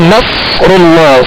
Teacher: اور آگے نصر اللہ صاد پر جزم ہے صاد ساکن ہے لہذا اس کی آواز ہلے گی نہیں. صاد کو پر پڑھنا ہے سیٹی کی آواز میں پڑھنا ہے اور را پر پیش ہے لہذا را کو پر کریں گے.